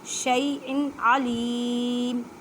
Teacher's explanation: واہوا بیکلی شیئن، شیء، اب یا ساکن سے پہلے زبر ہے تو یا لین کا قاعدہ کریں، مینس کے نرمی سے پڑھیں۔ اب حمزہ کے نیچے تنوین ہے، تنوین کے بعد عین ہے، عین حروف حلقی میں سے، یہاں پہ اظہار کا قاعدہ کریں